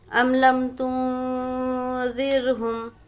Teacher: ام لم تنذر، حامیم پیش ہم، ام لم تنذرہم، یہاں پر را کو باریک پڑھیں گے، را ساکنہ سے پہلے زیر ہے